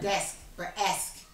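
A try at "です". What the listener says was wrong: Yeah, it's like des without the K.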